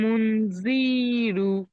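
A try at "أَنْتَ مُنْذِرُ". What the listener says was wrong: জি টান দেবেন না, জি তো টান নেই, হারাকাত আছে। আনতা মুনজিরু।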